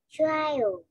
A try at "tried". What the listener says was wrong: Okay, tried. Right, tried. Thì mình có chữ gì nhỉ? Mình có chữ d ở dưới đúng không? D. Tried. Tried. Right.